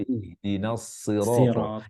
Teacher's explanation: huruf sod kita tegaskan kembali tanpa membulatkan bibir